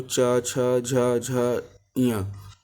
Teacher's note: चा वर्ग का उच्चारण तालु से होता है